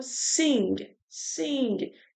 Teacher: Então, quando ele fala isso, quando a gente fala, é um som nasal que termina com um G. E ele vai diminuindo, ele vai morrendo assim, não é um G forte.